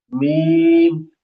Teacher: दोनों होठ मिलकर मीम अदा होगी।